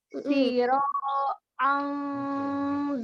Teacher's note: sinnya itu tidak panjang ya, jadi jangan dilemakan, jangan siro, tapi cepat siro ya.